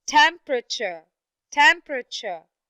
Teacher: although it was a long word and it has three syllables but the first syllable is the only syllable that is stressed